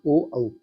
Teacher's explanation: ओ और औ इनका उच्चारण स्थान जो है कंठ होता है, कंठोष्ट होता है।